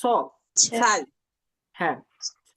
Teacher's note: এটা হচ্ছে যে আমাদের জিহ্বার আগাটা উপরের দাঁতের পাটির সাথে লেগে উচ্চারণ হবে স